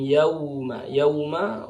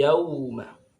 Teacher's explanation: waw sukun ini ketika dibaca bunyinya ke u, yauma, tidak boleh ke o, miring bacanya. Nah, secara kaidah tajwid itu kurang benar kalau dibaca miring.